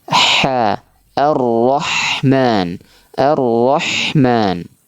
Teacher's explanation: huruf ha nafasnya seperti agak tertekan sedikit dan dia lebih terasa ditenggorokan.